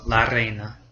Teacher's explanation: It's kind of a tongue tap on the roof of your mouth